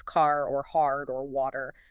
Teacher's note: General American and Irish English are strongly rotic. They stubbornly pronounce the R after a vowel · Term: rotic R